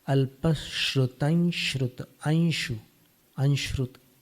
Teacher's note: श जो है तालव्य, उसी उच्चारण स्थान से इञ का उच्चारण होता है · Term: अनुस्वार